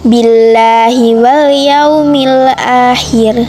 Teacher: Terdapat kaidah bacaan tarhi tipis sebab lafadz Allah didahului oleh kasroh. Alif lam khomariyah sebab alif lam bertemu huruf ya.